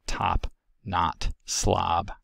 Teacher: of the back vowels is ah referred to as script a it is a low back tense and unrounded vowel found in words like top not slob · The A is articulated by lowering the jaw and flattening and retracting the tongue, plus the usual closure of the velopharyngeal port and phonation happening. · It is the low back corner vowel. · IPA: /ɑ/